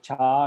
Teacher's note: the cha should be pronounced by the tongue, the middle part of the tongue touching the upper palate